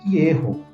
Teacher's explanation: Yeho, que é a vogal O, que é o Rolim em hebraico, a vogal longa. Então, primeira sílaba é uma sílaba aberta, nós temos uma vogal longa